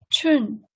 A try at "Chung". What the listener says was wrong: 它 有 一 个 后 鼻 音 ▁Chun.